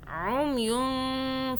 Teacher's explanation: نون کو ایسے چھپانا ہے کہ آپ کی زبان اوپر تالو پہ ٹچ نہ ہو، عمیون، ٹھیک ہے، اور آپ نے چھپا کے پڑھنا ہے یہاں پہ، جس کے اندر چھپا ہوا نون ساکن موجود ہے، اور آپ نے 2 سیکنڈ کا یہاں پہ 2 سیکنڈ کے لیے چھپانا ہے نون ساکن کو۔ عمیون فہم لا یرجعون، عمیون یوں، ٹھیک ہے، یوں، زبان ٹچ نہیں ہوگی، جہاں ہے وہیں رہے گی، اوپر تالو پہ ٹچ نہیں ہونی چاہیے۔ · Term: اخفاء